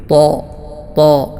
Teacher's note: തഫ്ഹീം തടിപ്പിച്ചുകൊണ്ട് ഉച്ചരിക്കുക ശബ്ദ പ്രതിധ്വനി വായനിറയെ ഉണ്ടാകുന്ന രൂപത്തിൽ ത്വാ ത്വാ ഈ രൂപത്തിൽ ഉച്ചരിക്കുമ്പോഴാണ് ശരിയായ രൂപത്തിലുള്ള ഈ ഒരു ആയത്തിന്റെ ഉച്ചാരണം